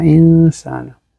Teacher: নুন সাকিনের পরে সিন আসছে ইখফা, তো নুন সাকিনের যে মাখরাজটা এটা সিনের সাথে চলে যাবে না খাইশুমে বা নাকে গুন্না